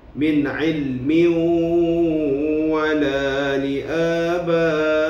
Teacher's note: Min ilmi wala li abaihim. Maka kita memasukkan ia, tanwin itu, ke dalam huruf waw dengan dengung. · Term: idgham ma'al gunnah